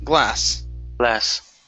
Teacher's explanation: use an unvoiced S